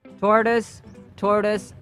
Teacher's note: So notice that the final sound is a schwa sound.